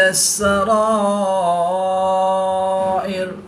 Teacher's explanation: الف مدہ کے بعد حمزہ اسی کلمے میں ہے تو یہاں پر مد متصل ہوگی. 3 سے 5 الف تک کھینچ کر پڑھیں گے.